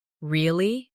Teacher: With a rising tone to show surprise.